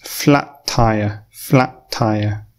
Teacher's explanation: we don't stop and pause flat tire we don't pronounce that sound twice we pronounce it once